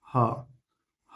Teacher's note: ह जो है वो घोष और महाप्राण दोनों है उष्म व्यंजन भी है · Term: घोष महाप्राण